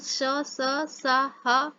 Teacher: वे व्यंजन जिनके उच्चारण में जिह्वा उच्चारण स्थान के इतने समीप होती है कि निकलने वाली वायु जिह्वा और उच्चारण के मध्य से घर्षण करती हुई बाहर निकलती है, इसी कारण इनको हम ऊष्म व्यंजन कहते हैं।